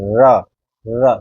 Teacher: अगर ये सवाल है लुंठित व्यंजन कौन सा है, तो वो र है, क्योंकि जो इसमें जीभ है ना हमारी, वो जो कंपन होती है हमारी जीभ में, र, र, तो पूरी जीभ ऐसे हमारी कंपन करती है, तो इसको लुंठित स्वर बोलते हैं।